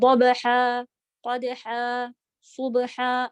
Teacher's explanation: بیچ میں با سیدھا قلقلہ کے ساتھ، اور پھر ہا بیچ والے حلق والا، ہا نہیں.